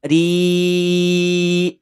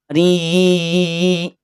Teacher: ketika memanjangkan lafaz ri, maka jangan sampai ada suara yang masuk ke rongga hidung atau bunyi sengau